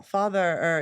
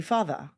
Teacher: if your mouth is staying open on the R on the end of father, it's a vowel. Father. It just has some what we call R color.